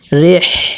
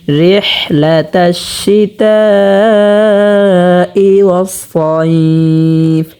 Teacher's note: এবং এখানে যে হাটা আমরা দেখতে পাচ্ছি, হাটাকে আমরা 2 নাম্বার মাখরাজ হতে, হলকের মধ্যখান হতে স্পষ্টভাবে উচ্চারণ করব।